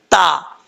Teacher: زبان کی نوک اوپر والے دانتوں کی جڑوں سے لگے تو تا پڑھا جاتا ہے۔ تا زبان کی جو نوک ہے اوپر والے دانتوں کی جڑوں سے لگانی، یہ اس کا مخرج ہے، ٹھیک ہے، اور اس کو باریک پڑھیں گے، پر پڑھنے کی ضرورت نہیں ہے۔